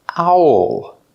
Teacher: Make the sound ow. And then the dark L.